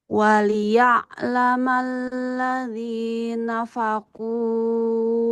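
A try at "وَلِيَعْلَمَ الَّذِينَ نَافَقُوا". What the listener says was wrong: Satu huruf ketinggalannya. Waliya'laman ladzina nafaqu, dua kali nun. Yang satu pendek, yang satunya panjang.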